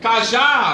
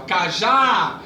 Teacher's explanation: Então, cajá, você fala que o já, você vai ver que é o mais forte.